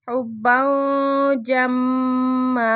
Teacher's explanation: غنے کے بغیر ادغام، اکلا لما وتحبون المال حبا جما، حبا تنوین کے بعد آگے جیم آ گیا، اخفا ہو رہا ہے